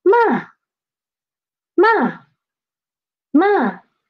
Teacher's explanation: It dropped rapidly, not slowly, okay?